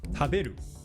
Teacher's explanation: in Japanese, every kana is one mora, so no elongations